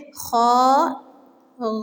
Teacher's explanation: حلق کے پہلے حصے سے ہی خا بھی ادا ہوتا ہے